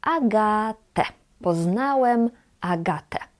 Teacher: we read ę at the end as e